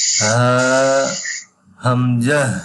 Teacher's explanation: এই হা আর হামজা গলার একই স্থান থেকে উচ্চারণ হবে গলার কণ্ঠনালী শুরু থেকে হা হামজা মাশাআল্লাহ মাশাআল্লাহ, আলহামদুলিল্লাহ।